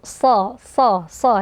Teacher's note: Shad ini juga Huruf tebal jadi terangkat ee pangkal lidahnya juga dia itbak ya jadi Aula Tengah lidah ini tertutup SH